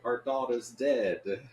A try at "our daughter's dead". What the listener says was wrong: It sounds like you said our dog is dead.